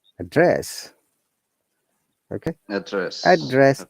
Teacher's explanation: so when it is verb now we are stressing the second part that is rising down the falling tone so i'm writing it